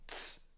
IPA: ts